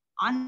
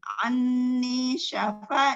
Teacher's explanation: Anni syafa ni bacaan maqabi'i. Syafa ada fathah menghadapi alif dibaca dua harokat atau satu ayunan